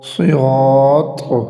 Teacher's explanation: Number 1 صاد اور number دوسرا ہے قا۔ صراط، صاد کو بھی موٹا کیا جائے گا اور طا کو بھی موٹا کیا جائے گا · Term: حروف مستعلیہ